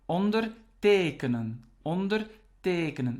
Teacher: the stress is on the second part